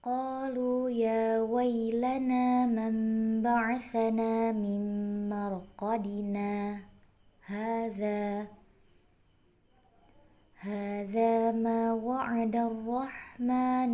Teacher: Saktah, yaitu membacanya dengan berhenti sejenak tanpa bernafas sepanjang 2 harokat